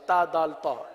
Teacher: زبان کی نوک اور اوپر کے دانتوں کی جڑ سے یہ حروف ادا ہوتے ہیں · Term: حروف نطعیہ